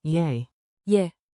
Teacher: Say it like a quick, soft yay, yeah, with rising intonation, think two ascending notes